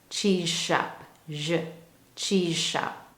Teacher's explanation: For example, if I have a sentence with these two words, cheese shop, so I have a word that ends with a Z sound cheese, and the next word begins with an sh shop. When I put these together, you're going to hear a J sound.